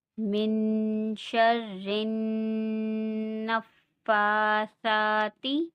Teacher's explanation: نون ساکن پہ غنہ ہوگا کیونکہ آگے اخفا کا حروف ہے